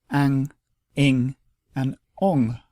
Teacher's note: phonetically the nigahita is not a separate sound but it indicates a nasalization of the preceding vowel and it only joins with short vowels to form ang